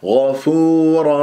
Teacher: الغين يجري فيها الصوت لا يجري فيها النفس